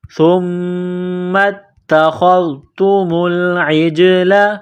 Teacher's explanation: میم مشدد ہے، غنہ کریں گے، آواز ناک میں چھپائیں گے